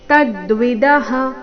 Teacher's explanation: ತದ್ವಿದಃ ತ ಮೇಲೆ ಆಘಾತ.